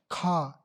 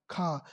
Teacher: स्पर्श व्यंजन होनी चाहिए, कंठ ध्वनि, अघोष और महाप्राण ध्वनि होनी चाहिए।